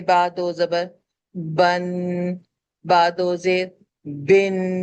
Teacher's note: تو گویا تنوین کے آواز میں ہم نون ساکن کی آواز کو ایڈ کر دیتے ہیں. آخر میں جو بن، یہ جو ان کی آواز آ رہی ہے نا، اسے تنوین، اسے غنہ کہا جاتا ہے، اور یہ تنوین کے ساتھ لازم و ملزوم ہوتا ہے.